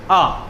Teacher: आ में क्या होता है, मुख सबसे ज्यादा खुलता है। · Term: विवर्त